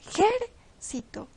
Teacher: la palabra esdrújula lleva la sílaba tónica en la antepenúltima